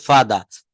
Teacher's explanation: ইউকে এক্সেন্টে সেখানে এই আর বা রটা কিন্তু শেষের র টা সাইলেন্ট থাকে